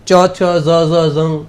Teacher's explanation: એ તાલવ્ય છે એટલે કે તમે જીભ તાળવાને અડાળ્યા પછી જ બોલી શકો